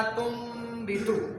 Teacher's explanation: جب نون ساکن یا نون تنوین کے بعد با آ جائے تو وہاں پہ اقلاب ہوتا ہے، یعنی اس کو چھوٹی میم کے ساتھ بدل کے پڑھے · اصل میں یہ لفظ لکھا ہوا تھا تن بیتو، ہم نے پڑھا تم بیتو، یہ اس کے اوپر چھوٹی سی میم آ گئی ہے.